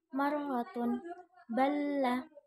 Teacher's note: huruf yang pengucapannya miring setelah keluar dari ujung lidah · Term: al-inhiraf